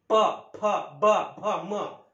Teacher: ओष्ठ म्हणजे ओठाला ओठ भिडूनच यांची उच्चारण होते